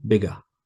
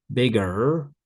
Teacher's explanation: in British English, we often don't pronounce the R at the end of words. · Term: British pronunciation